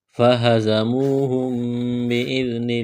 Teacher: میم ساکن کے بعد با ہے تو یہاں پر غنہ کریں گے، آواز ناک میں چھپائیں گے ، اس ناک میں آواز چھپانے کو اقلاب کہتے ہیں، حمزہ